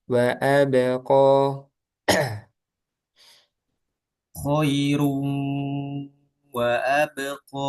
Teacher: Qo jangan sampai ada hamzah ya. Qo tapi qo di udara berhentinya di rongga.